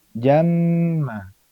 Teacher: Kemudian jamma di sini ada mim bertasydid. Mim bertasydid merupakan ghunah yang paling sempurna. Dia di atas ikhfa.